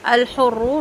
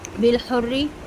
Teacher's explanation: الحر، را پر، بالحری، را باریک